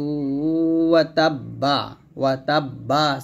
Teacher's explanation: এরকম তাব্বাত ইয়াদা আবি লাহাবি ওয়া তাব্বা সে থামলে হবে, এবারে কলকলা হবে, তাসদিদ পড়তে হবে তবে বা কলকলা করতে হবে